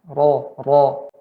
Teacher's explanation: perhatikan pada ro yang lob. Tetap ada getaran R-nya